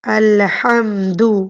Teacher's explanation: الحمد ہا وسط حلق سے نکلے گی